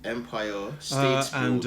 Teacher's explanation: So it's no R at the end of Empire State Building. And there's a slight tendency to say state with a D, state building, state building.